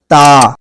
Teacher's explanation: زبان کی نوک اوپر کے دانتوں کی جڑ سے جا کر ملتی ہے, اوپر کے دانتوں کی جڑ سے جا کر ٹکراتی ہے, پھر یہ والا حرف ادا ہوتا ہے.